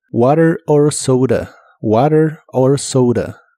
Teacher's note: La T de water en inglés americano se suele pronunciar como water. Y la o de soda se pronuncia como ou. La D de soda la puedes pronunciar como d, soda o como soda.